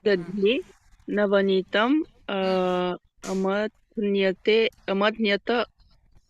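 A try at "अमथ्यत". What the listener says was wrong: Mathu is the dhatu, so you don't hear that nakara. Okay, so amathyata. Okay, so mathu is only the dhatu.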